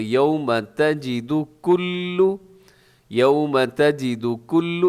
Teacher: سب سے پہلے یوم تجد کلو، یوم تجد کلو، اسے کلو نہ کیجیے گا، کلو پہ پیش کی وجہ سے ہونٹ آپ کے گول ہوں گے